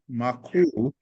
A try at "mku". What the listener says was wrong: This is mku. Mku. Mku. Not ma, it's mu. You see, the letter M will be pronounced like this. So it is mu.